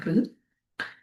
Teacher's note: le R roulé donc avec quelques battement de la pointe de la langue contre la région alvéolaire. Donc R ou euh elles peuvent se caractériser également par la présence des cordes vocales.